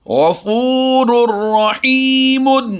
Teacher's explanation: بالکل ظاہر کر کے اس کو پڑھا ہے، ہم نے غنہ نہیں کیا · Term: ادغام بلا غنہ